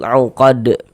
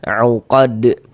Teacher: Jadi huruf-huruf yang 5 itu kalau dalam keadaan sukun, baik itu sukunnya sukun asli atau sukun sebab disukun karena berwakaf, intinya kalau huruf-huruf itu dalam keadaan sukun mantul. Huruf dal ini kan kedudukannya menjadi sukun. Sukun sebab kita sukunkan tadi itu karena berwakaf. Dia mantul. Uqad. Dan ini dia masuk kepada qalqalah. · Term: Qalqalah kubra